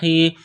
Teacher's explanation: گلے کے درمیان سے زور لگا کر ح کو نکالیں گے